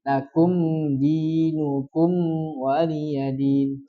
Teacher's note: Mim sukunya itu kan ada sifat bainiah tuh. Bainiah itu mengalir sedikit. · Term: sifat bainiyah